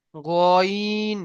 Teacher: মুখকে গোল করে পড়তে হবে, লম্বা নয়